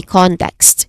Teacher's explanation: It has only two distinct syllables too, starting with con, which is its stressed syllable.